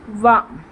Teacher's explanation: next దంతోష్ట్యం, దంతము, ఓష్ట్యం అంటే పెదవులు, దంతాల నుంచి పెదవుల ద్వారా పలుకబడే అక్షరం